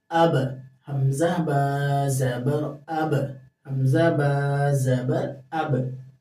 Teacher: अब होंठ चिपकेंगे और वाइब्रेट होकर छूट जाएंगे। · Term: क़लक़ला